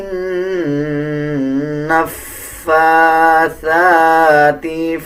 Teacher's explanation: فا کے اوپر کھڑا زبر ہے، ثا کے اوپر کھڑا زبر ہے. ان دونوں الفاظوں کو 1 سیکنڈ لمبا کر کے پڑھا جائے گا